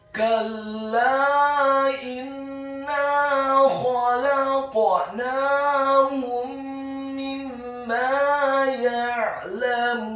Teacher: Kalla, huruf kafnya dibaca tipis, fathah 1 harokat. Huruf lam alifnya dibaca tipis, tarqiq ditasydidkan, ditekankan, fathah 2 harokat.